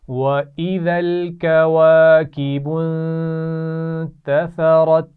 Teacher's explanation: کواکب غنہ کیا جا رہا ہے، اور تثرت سا کے مخرج کا خیال رکھنا ہے، اس میں سیٹی نہیں ہونی چاہیے